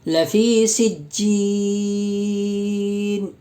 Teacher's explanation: یا ساکن سے پہلے جیم کے نیچے زیر ہے، یا مدہ ہوگی، اس لیے یا مدہ کو 1 الف کے برابر کھینچ کر پڑھیں گے